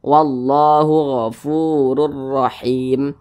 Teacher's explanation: Kemudian di sini ada huruf ra yang memiliki tanda baca fathah. Kedua-dua huruf ra ini dibaca tebal, dibaca tabkhim, sehingga pangkal lisan kita itu naik terangkat ke atas ketika kita mengucapkannya